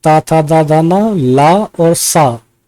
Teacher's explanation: जिनका उच्चारण ऊपर के दांतों पर जीभ लगाने से होता है उसे क्या कहते हैं? इनको दंत्य ध्वनि कहा जाता है।